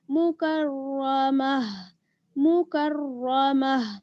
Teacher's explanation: یہ جو تا ہے گولتا، اس کو آپ ہا کے ساتھ بدل دیں گی اور آخر میں ہا کی آواز نکالیں گی